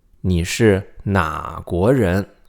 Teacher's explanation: the pronunciation of 哪 remains third tone, right? Because 国 is a second tone, so it doesn't change tones. 你 是 哪 国 人 Okay, very low and then rise.